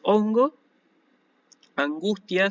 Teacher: no se van a pronunciar como una G, sino que se van a pronunciar como una N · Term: gama nasal